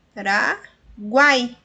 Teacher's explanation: nós temos uma sílaba que possui uma semivogal, uma vogal e outra semivogal. Então, é tritongo.